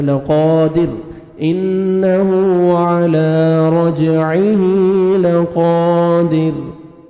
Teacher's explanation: را کے ساکن کریں گے تو را کو باریک پڑھیں گے کیونکہ را ساکن سے پہلے کسرہ ہے, دال کے نیچے کسرہ ہے.